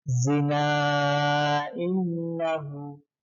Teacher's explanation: Zina ini kenapa dibaca panjang 2,5 alif karena ada mad tabi'i ya bertemu dengan hamzah setelahnya pada lafal yang berbeda. Zina innahu ini lafalnya berbeda, maka disebut hukum bacaannya mad jaiz munfasil.